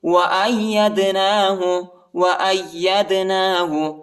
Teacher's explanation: حمزہ کو یا کے ساتھ ملائیں گے، اور یا کو دال کے ساتھ ملائیں گے، دال کو جھٹکے کے ساتھ پڑھیں گے